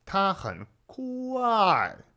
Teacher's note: Fourth tone actually starts all the way up there where first tone is.